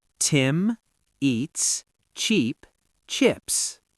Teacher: Tim is short. Eats is long. Cheap is long. Chips is short.